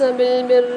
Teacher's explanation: أَتَأْمُرُونَ النَّاسَ بِالْبِرِّ، یہاں پر را کے اوپر مشدد آ رہی ہے تو سختی اور جماؤ کے ساتھ پڑھیں گے